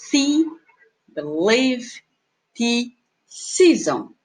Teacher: Eu tenho a vogal que a gente diz que ela é tense, que ela é long vowel, que eu conto nas palavras see, believe, tea, season.